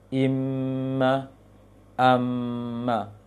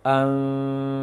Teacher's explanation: Bibirnya direnggangkan sedikit, tidak rapat seperti mim biasa. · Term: mim yang samar